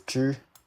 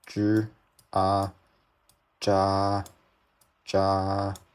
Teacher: because this is the first tone, you want the sound to be very flat